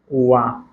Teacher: वा जो ध्वनि है, वा, इसका उच्चारण स्थान है दंतोष्ठ